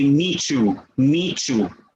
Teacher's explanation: The T and the Y become assimilated together.